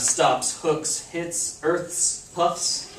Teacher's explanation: if you have unvoiced sounds before the S we have that sound just the S